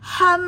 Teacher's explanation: Ham tahan pada mim musadadah. Wajib dengung dua harakat ya.